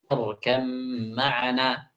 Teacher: Asalnya kan ya bunayyarkab ma'ana. Diubah ba-nya itu menjadi mim.